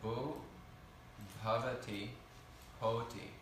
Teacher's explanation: These are all coming from that same vowel gradation of u to o to ava. · some transformation here of BH becoming simply H under certain circumstances